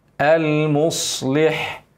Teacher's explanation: خلي بالك الصاد الصفير والاطباق